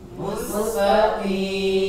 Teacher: Jangan juga terlalu tipis sehingga jadi huruf kaf.